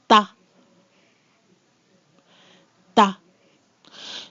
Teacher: the T is what I call dry. There's not a lot of air there. And it's followed by the letter A, which is pronounced A.